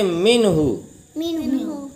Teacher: نون میں ناک میں آواز نہیں لے جائیں گے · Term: اظہار